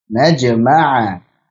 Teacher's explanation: Jadi qalqalah sughra, qalqalah yang wasal, jangan diputus suaranya.